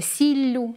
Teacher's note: якщо у слові в основі один приголосний – сіль, то він подвоїться, подовжиться у вимові